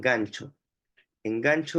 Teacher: es un fonema oclusivo velar sonoro o sea basta con que sea se articule en el velo